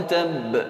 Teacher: Ese sonido, insistir en ese sonido en el ba es, como habíamos estudiado en los rasgos distintivos, es al-qalqala, que aplicamos con el ba cuando lleva sukun, y cuando lleva shadda es más notable porque es difícil de realizar en su punto de articulación y hay que aplicarle esa insistencia, esa qalqala, para que se note el sonido.